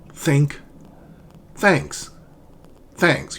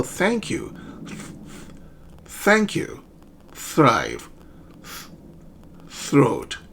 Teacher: So your tongue tip, it's between the teeth. It says so think of it as biting your tongue, but not too hard, very gently, right? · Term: voiceless consonant